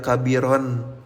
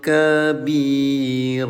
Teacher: Bunyi tanwinnya dirubah jadi panjang dua harakat ya. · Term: mad